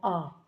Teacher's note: विवरित जिन स्वरों के उच्चारण में मुख पूरा खुल जाता है